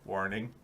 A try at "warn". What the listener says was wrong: You say warn like warm. Warn.